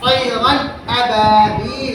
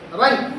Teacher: تنوین نون ساکن کی آواز کو بغیر غنہ کے ظاہر کر کے پڑھیں گے. ظاہر کر کے، غنہ نہیں کریں گے. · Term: اظہار حلقی